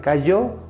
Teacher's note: si la palabra aguda es cayó, el acento está en la sílaba yo